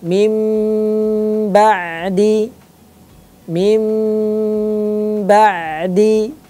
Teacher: cara membaca iqlab diubah menjadi mim disertai dengan dengung